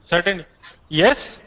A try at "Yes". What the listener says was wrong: That seems to be doubt. Say it with certainty.